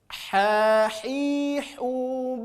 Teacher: ini murni keluar dari tengah tenggorokan. Ha hi hu bah, ngalir ha. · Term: huruf H, huruf ha